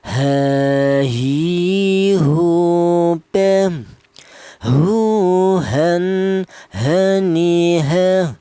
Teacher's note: Huruf ha ini keluarnya huruf berasal dari pangkal lidah, pangkal tenggorokan ya. Dimana pangkal tenggorokan itu ditempati dua huruf, yaitu huruf ha ini dan huruf hamzah ya.